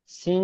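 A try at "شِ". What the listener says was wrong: শিন জের শি, শিন। সিন নয়, শিন।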